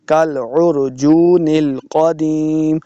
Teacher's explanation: عاد کالعرجون القدیم، اس کاف کو موٹا نہیں پڑھیں گے، کالعرجون القدیم، قاف کو موٹا پڑھنا ہے